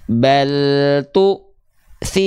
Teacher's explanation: Di tu-nya seolah terhentak, tertahan suaranya.